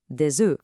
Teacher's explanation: And don't forget that liaison. The S in des makes a Z sound to connect to the vowel.